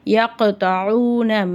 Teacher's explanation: அதனால் அதை நம்ம அசைச்சு ஊதணும். யக்தஊன மேலே பெரிய மது இருக்கிறதுனால 5லேருந்து 7 அலிஃப் வரைக்கும் நல்லா நீட்டி ஊதணும். · சுக்குன் பெற்ற காஃப் கல்கலாவுடைய எழுத்து. அதனால் அதை நம்ம அசைச்சு ஊதணும்